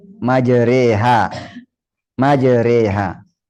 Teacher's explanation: Membaca fathah yang dimiringkan ke kasrah atau alif miring ke ya. Menjadi majreha. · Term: imalah